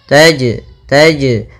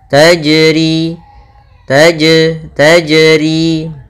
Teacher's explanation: ada jim sukun atau jim mati maka ia kita namakan dengan bacaan qalqalah yang Mana suara jimnya harus memantul